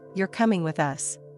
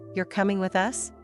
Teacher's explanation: The first one ends with a falling tone. It's a statement. The second one rises at the end. It's a question. The words are exactly the same, but the meaning changes completely because of the intonation.